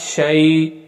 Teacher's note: اس یا کو نہ زیادہ لمبا کریں گے نہ بالکل چھوٹا پڑھیں گے ، بلکہ نارمل شین زبر یا شئی، حمزہ دو زیر ان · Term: یا لین